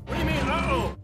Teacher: When said very quickly, the T at the end of what is almost silent and sounds like wa. Also, the O at the end of do becomes a schwa and sounds like a. And the word you is reduced to ya. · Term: connected speech